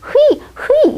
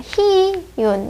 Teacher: 어떤 사람이 너무 어렵다고 얘기해요. 이거를 흐이 이렇게 발음하려면 당연히 어렵죠. 얘를 희망할 때처럼 이로만 발음해야 돼요.